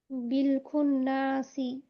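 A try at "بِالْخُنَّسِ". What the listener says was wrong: টান হলো কেন, নুনে টান হলো কেন? নুনে তো টান হবে না। বিল খুন্নাসি, হরকত হয়েছে না?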